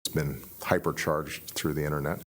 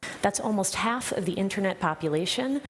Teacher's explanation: You just drop the T. You get rid of it in an NT cluster. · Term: dropped T